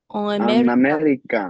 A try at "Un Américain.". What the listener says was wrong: So that's where I need that N right there. Un Américain.